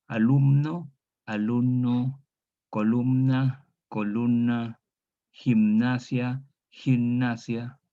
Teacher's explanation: ahora entre un problema de asimilación asimilación m en estos en la n asimila la m y ésta se transforme en n igual que en nuestro español popular chileno · Tenemos MN, entonces la N asimila la M y esta se transforma en N.